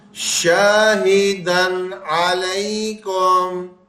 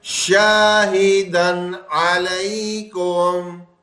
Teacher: جیسے ہی عین آیا وہاں پہ فوراً ہم نے نون ظاہر کر کے پڑھ دیا، تنوین کا غنہ نہیں کیا